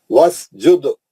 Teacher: وس سین پہ سیٹی ماریں گے · دال پہ خلخلہ کریں گے کبرا